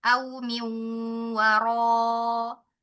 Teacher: Dhammahnya kemudian sempurna, mencucu, kemudian di kata ro-nya. Nah, ini ro-nya pangkal lidahnya naikkan